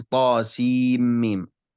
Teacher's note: السين مد لازم حرفي مثقل 6 حركات